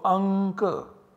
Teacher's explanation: this anusvara, is to be substituted by a savarna of ka, which is the nasal savarna of ka, which is ng. So, anka. The word anka in Sanskrit should be written like this, anka, and not like this.